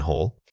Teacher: Notice how the extended vowel requires you to hold your breath for a fraction of a second longer. This change in airflow signals a different rhythmic beat.